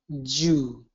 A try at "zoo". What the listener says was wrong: Nope, get it in the same position as Sue. Okay, so that the only difference there is that the Z is a voiced sound, so your voice is going to turn on, and the S is a voiceless sound. So they're pairs.